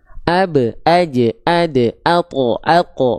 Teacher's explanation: Ab, aj, ad, at, aq. Baru dipantulkan karena ada sifat qalqalah